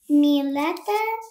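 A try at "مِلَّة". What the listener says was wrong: milla, So you have to like put emphasis on Millata. You gotta make that letter which has a shadda, put some more pressure on it.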